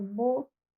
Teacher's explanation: O U é uma realização do O no final